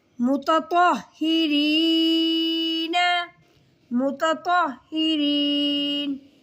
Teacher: تا کو باریک اور طا کو موٹا